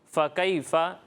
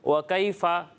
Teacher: فا کی ادائیگی واضح ہونی چاہیے، ٹھیک ہے؟ فا واو کی طرح نہیں لگنا چاہیے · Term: فا کی آواز